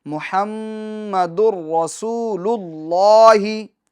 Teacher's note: محمد الرسول اللہ، محمد الرسول اللہ، اور اللہ میں لفظ اللہ کے لام کو ہم پور پڑھیں گے، کیونکہ لفظ اللہ کے لام سے پہلے والے حرف پر پیش آ رہا ہے، اور اس کا قاعدہ ہم آگے انشاءاللہ عز و جل پڑھیں گے۔ ابھی یہاں پر لفظ اللہ کو ہمیں پور یعنی موٹا پڑھنا ہے